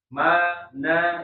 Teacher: cuman dua tuh huruf yang di hidung mim sama Nun dan itu memang enggak bisa Harus harus ya pasti masuk hidung